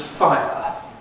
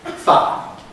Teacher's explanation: If this is fi with an uh after it, fire, what happens is the I loses its second element. So, instead of being I, it's just ah. You can hear this in words like triangle, which I usually say as triangle. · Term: smoothing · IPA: [faə]